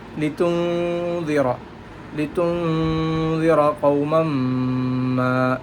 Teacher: In this ayah, litunzira, again their hukum is ikhfa. We have to unclear the noon and give the gunna. Litunzira, litunzira qawman ma, and the mim with shad, we have to give gunnat.